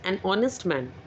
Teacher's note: In the word honest, the letter H is silent. So the word begins with the vowel sound O. So we use an before it.